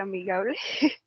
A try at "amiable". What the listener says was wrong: Amiable. Already you say amigable in Spanish. amiable. The pronunciation is amiable and is